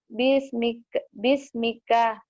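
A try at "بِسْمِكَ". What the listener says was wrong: Bismika dihentikan jadi bismik. Mik, hamas. Hamas. Bismik.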